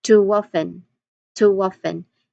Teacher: Lastly, we have to waffen to waffen. It's very obvious in the phonetic transcription that there's a W sound there. So, you say it as toen to waffen.